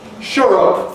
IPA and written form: ʃʊr ʊp (shut up)